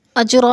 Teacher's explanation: اجرا میں قلقلہ ہو رہا ہے، جیم ساکن ہے اور حروف قلقلہ میں سے ہے تو اس کو ہلا کر پڑھنا ہے